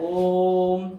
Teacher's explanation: 2 चुटकी से ज्यादा समय लगा, यानी काफी समय लग रहा है। इनको हम क्या कहते हैं? प्लुत स्वर कहते हैं। · ये प्लुत स्वर है क्योंकि इसको बोलने में इससे 3 गुना ज्यादा समय लगता है।